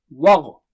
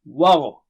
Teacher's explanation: و یہاں پر پتلا اور غین موٹا اونچا